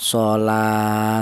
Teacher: Ini menunjukkan bahwa huruf lam tersebut dibaca panjang. Yaitu panjangnya satu alif atau dua harakat atau dua ketukan.